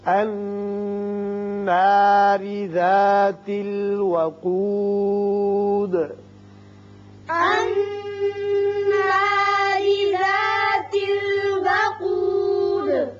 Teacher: یہاں را باریک ہوگا اس لیے کہ نیچے زیر ہے، کسرہ ہے. وقود یہاں دال ساکن ہو رہے ہیں ہر آیت کے سرے پر تو ان کی صفت قلقلہ ادا کریں گے